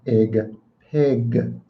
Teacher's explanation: I promise you mine's a g it's not a k